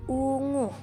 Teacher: vokal u tinggi atas belakang bundar